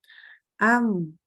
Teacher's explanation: selain merapatkan kedua bibir ini adalah disertai dengan dengungan dari rongga hidung · kita merapatkan kedua bibir-bibir atas sama bibir bawah dirapatkan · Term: huruf mim